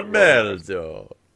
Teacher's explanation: I didn't roll my R at all.